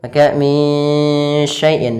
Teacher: samarkan suara nunnya kepada huruf shin. Maka min syai'in sambil ditahan gunnahnya 2 harakat. Kemudian pada lafal syai'in, pada lafal syai' sendiri ada bacaan lin yang lembut.